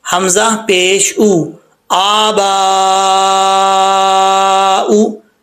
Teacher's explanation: پڑھنا حمزہ ہی ہے، ساؤنڈ حمزہ کا آئے گا، واو کا نہیں آئے گا